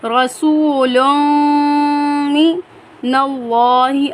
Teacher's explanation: اللہ والے لام سے پہلے زبر ہے، اللہ والے لام کو ہم پر پڑھیں گے · رسول، یہاں پر میم مشدد ہے، میم مشدد جب بھی ہو کر آئے گا تو اس پر ہم غنہ کریں گے، لام کو میم کے ساتھ ملاتے ہوئے غنہ کریں گے